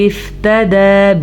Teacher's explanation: تا کو بھی لمبا نہیں کریں گے, دال کو کھینچ کے پڑھیں گے, دال پہ کھڑی زبر ہے